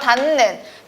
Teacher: 니은이 비음입니다. 그리고 디귿은 비음이 아니죠. 비음이 아닌 거에 영향을 줘서 비음으로 만들어 버렸습니다. 그래서 닫는이라고 최종적으로 발음을 하게 되죠. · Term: 비음화